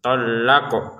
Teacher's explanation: di sini huruf qafnya kita pantulkan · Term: pantulan